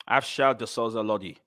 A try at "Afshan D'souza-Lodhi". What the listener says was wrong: Yeah, it's a Lodi rather than Lodhi. Low.